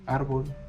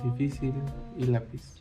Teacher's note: La sílaba tónica recae en la penúltima. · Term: palabras graves o llanas